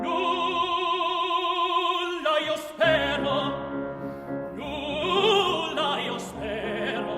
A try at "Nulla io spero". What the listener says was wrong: Bravo.